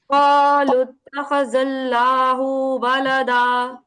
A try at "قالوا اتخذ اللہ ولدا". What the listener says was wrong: کیا ہم ہو کو کھینچیں گے؟ قالوا اتخذ اللہ نہیں کھینچیں گے. جی بالکل. قالوا اتخذ اللہ ولدا.